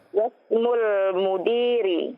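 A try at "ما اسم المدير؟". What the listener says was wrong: Masmul mudiri. Itu pertanyaan. Intonasinya bagaimana? Masmul mudiri.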